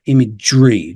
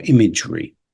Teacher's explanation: there's a slight schwa in the middle, but imagery, it's like you're joining up G and R in this case. It sounds a bit like that.